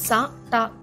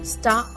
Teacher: మధ్యలో ఎలాంటి ఓవెల్ లేకపోతే అప్పుడు ఆ రెండు అక్షరాలు సంయుక్తాక్షరంగా అవుతాయి కాబట్టి ఎస్ టి యొక్క శబ్దం స ట కాకుండా స్ట అవుతుంది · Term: సంయుక్త శబ్దం